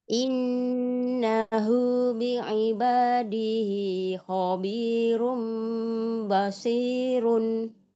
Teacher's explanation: Hinya jangan terlalu panjang. 2 harokat saja.